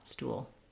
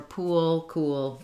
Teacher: It's one syllable, but we really drag out that sound because we have that little schwa and that little gliding w sound before our L, stool. Same thing for pool, cool, etc.